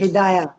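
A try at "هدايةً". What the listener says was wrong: ہدایتن، ٹھیک ہے، اینڈنگز پڑھا کریں، ٹھیک ہے،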